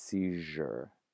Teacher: when you had a z next to a y inside of a word, that they sort of smushed together to become a j sound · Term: assibilation